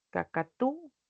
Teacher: la U se vuelve tónica